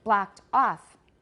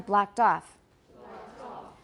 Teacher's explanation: Both are stressed, but we're at the end of an utterance, so off is going to be higher. It sounds like it's got more stress. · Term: tonic stress